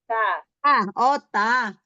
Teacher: Ta itu di ujung lidah bertemu dengan gigi seri atas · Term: Huruf ta